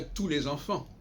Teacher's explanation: on dit bien tous les enfants, on ne prononce pas le S